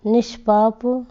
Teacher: अगर इनका मेल होता है तो विसर्ग जो है वो मूर्धन्य श में चेंज हो जाता है।